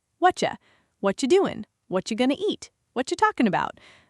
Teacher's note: This one combines two reductions. What are you compresses and the T and Y blend into a ch sound.